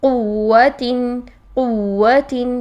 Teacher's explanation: اس میں واو مشدد سے پہلے پیش بھی ہو سکتی، جیسے قوتن قوتن، تو اس کو بھی قوتن نہیں کریں گے، یہ واو مدہ کی شکل اختیار نہیں کریں گے، اس کی قوہ کریں گے اور دونوں ہونٹوں کو گلائی سے ہی ادا کریں گے، واو کو وی کی ساؤنڈ نہیں لے کر آئیں گے